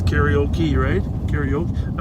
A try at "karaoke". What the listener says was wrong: You've got one too many syllables. Karaoke.